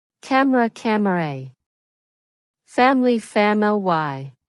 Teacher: Native speakers often remove the middle schwa sound. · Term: syncopy